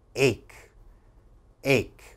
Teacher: that ch has to have a strong k sound